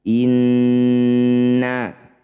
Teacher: Cara bacanya bunyi nun ini wajib didengungkan atau ditahan dulu 2 ketukan. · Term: gunnah musyaddadah